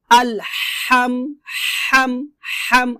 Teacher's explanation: আপনাকে এই হাটা গলার মাঝখান থেকে হলকের মধ্যখান থেকে হাটা চাপ দিয়ে চিকন করে উচ্চারণ করতে হবে